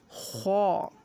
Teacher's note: یہ دھیان رہے ہم کو خا حلق سے نکالنا ہے، نہ کہ کھا۔ یہ غلط طریقہ ہے پڑھنے کا۔